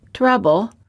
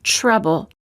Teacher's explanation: door audit t plus r sounds like an almost ch sound when the t is followed by an r sound the t changes and becomes an almost ch sound